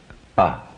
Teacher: feel how it remains in the back of the mouth does not move forward in any way towards the lips or the teeth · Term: guttural